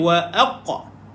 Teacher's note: matikan qaf, ada qalqalah pada qaf, qalqalah sughra, lantunan kecil.